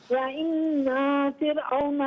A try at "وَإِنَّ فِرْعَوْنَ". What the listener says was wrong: اچھا باقی آپ نے ماشاءاللہ صحیح پڑھا، وَإِنَّا فِرْعَوْنَ نہیں وَإِنَّ فِرْعَوْنَ، کیونکہ نون پر فقط زبر ہے، اسے بغیر کھینچے پڑھیں گے.